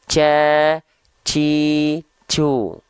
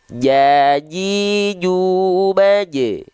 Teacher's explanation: Tidak ada sedikit pun percikan nafas keluar ketika kita melafalkan huruf jim.